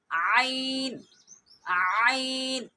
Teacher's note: عین حلق کے درمیان والے حصے سے ادا ہوگا، جس سے ہا ادا ہوا تھا، ہا اور عین یہ حلق کے درمیان والے حصے سے ادا ہوتے ہیں۔